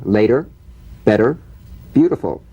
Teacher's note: The medial T becomes a soft D.